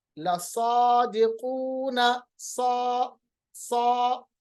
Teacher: सीन और स्वाद में ये फर्क है कि स्वाद को पढ़ते वक्त होंठों को हम मोटा करते हैं मगर स्वाद भी सीन की तरह तेज पढ़ा जाता है